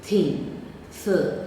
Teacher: English has a voiceless dental fricative th